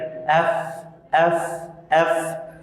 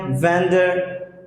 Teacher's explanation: you can notice my lower lips will touch my upper teeth, like F.